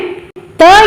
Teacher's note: ಎಂಬ ಧ್ವನಿಯ ಉತ್ಪತ್ತಿ ಸ್ಥಾನ ಯಾವುದು ಅಂದ್ರೆ ದಂತೆ ಏನು ಇದು ದಂತೆ ಅಂದ್ರೆ ಹಲ್ಲುಗಳ ಸಹಾಯದಿಂದ ಹುಟ್ಟುವ ಅಕ್ಷರಗಳಿಗೆ ನಾವು ದಂತೆ ಅಂತ ಹೇಳಿ ಕರೀತೀವಿ